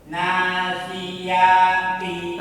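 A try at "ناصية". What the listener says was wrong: ianya pendek. Nasiyati.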